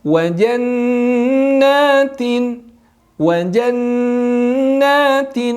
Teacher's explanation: Jangan tergesa-gesa bacanya dengan menahan dulu huruf nun sebanyak 2 harokat. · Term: gunnah